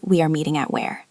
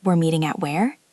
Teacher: The key here is the intonation. You have to go up at the end.